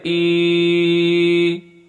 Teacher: کھڑی زیر ہے، 1 سیکنڈ کھینچ کے بولیں گے